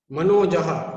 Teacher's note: મનોજહમાં મનું સ્થાન છે એ ઓષ્ટ્ય છે, નનું સ્થાન છે એ દંત્ય છે અને જનું સ્થાન છે એ તાલવ્ય છે. તાલવ્ય, દંત્ય અને ઓષ્ટ્ય.